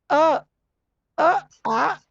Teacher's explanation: कंठ से बोलने वाले वर्ण, जो गले से आवाज जिनकी निकलती है, वो है ये वर्ण। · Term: कंठ्य